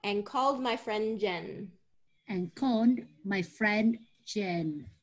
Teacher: there's a little bit of a drop of that D sound because of the next word